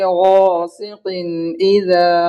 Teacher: اب یہاں پہ اور ایک قاعدہ ہے، قاف کے نیچے 2 زیر کی تنوین ہے، اور 2 زیر تنوین کے بعد حروف حلقی کے 6 حرف میں سے حمزہ آیا ہے تو یہاں پہ اظہار ہوگا. اظہار یعنی ظاہر کر کے بلا غنہ کے جلد پڑھیں گے. اور دال کو کھینچیں گے الف کے برابر، اس لیے کہ الف مدہ ہے.